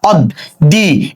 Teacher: যার সঙ্গে বফলা যুক্ত থাকে তার উচ্চারণ কি হয় দ্বিত্ব উচ্চারণ হয়।